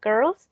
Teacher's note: in the case of girls the L Sound is voiced